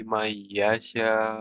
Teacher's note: Kemudian may itu didengungkan gunah ditahan